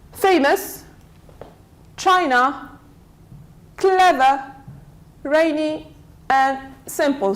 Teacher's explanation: So stress falls on the first syllable.